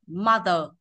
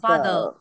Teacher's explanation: anh Anh thì nó chỉ đọc đến chữ ơ này thôi ạ mother hết Nhưng anh mỹ thì nó kéo dài đuôi chữ